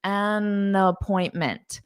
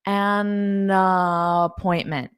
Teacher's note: So an the article needs to combine with appointment.